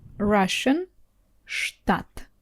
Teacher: Again this Russian ш is a little bit harsher than in English.